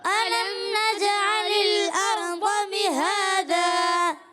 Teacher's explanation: میم ساکن کے بعد نون آ رہا ہے مگر غنہ نہیں ہوگا، کیونکہ میم ساکن کے بعد جب کبھی دوسری میم آئے یا اربا آئے تو غنہ ہوتا ہے. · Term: اظہار شفوی